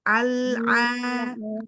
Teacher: Lam sukun, Al-aqabah. lam sukunnya jangan memantul, jangan tawalud. Al-a ditahan dulu lidahnya.